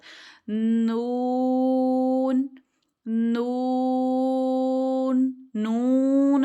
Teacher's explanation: पहले आपकी जुबान लगेगी जाके सामने सामने वाले जो दांत है ना उनके साथ लगेगी